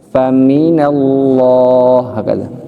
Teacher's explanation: Jadi bukan faminallah tapi faminallah. Fa-nya rendah, mimnya ngangkat